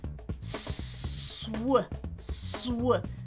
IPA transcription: sw